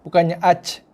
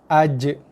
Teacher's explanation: Okey, boleh ketat sikit bunyi dia. Ada tekanan pada makhraj, kawasan tengah lidah. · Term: qalqalah